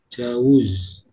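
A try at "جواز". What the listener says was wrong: Jawuz, kalau uwus mustahil karena ada alif di sini. Jawaz.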